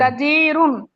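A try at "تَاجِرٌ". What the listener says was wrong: তাজিরুন না, তাজিরুন, টান।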